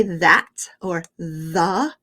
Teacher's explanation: if you really drag out the you can really feel your throat vibrate it's called the voiced th